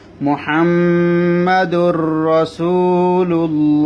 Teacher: যদি নুন সাকিন এবং তানবিন এর পরে যদি লাম র আসে তখন নুন সাকিন এবং তানবিনটা লাম র এর মধ্যে ঢুকে যাবে গুন্না ছাড়া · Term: গুন্না ছাড়া ইদগাম